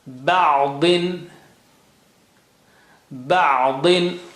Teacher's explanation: Da is very thick and high sounding, okay? But the double kasra is bringing down the effect, but still there.